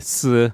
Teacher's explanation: There's the classic sh, which is actually a s in some areas.